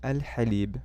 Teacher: So al-kitab. Halib, ha is with your throat, not the tip of your tongue